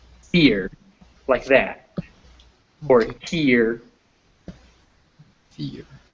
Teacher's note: So it's not really that's a diphthong on its own, as that final R is bringing in a schwa next to it. So you could kind of think of here and fear as two syllables.